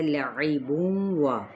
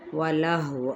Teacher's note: الا یہاں پہ ساتھ ہی الف مدہ ہے، لعبون و، اب یہاں پہ عین کو وسط خلق سے ادا کرنا ہے، تنوین پیش کے بعد واو آ رہا ہے، متحرک ہے، تو یہاں پہ ادغام مع الغنہ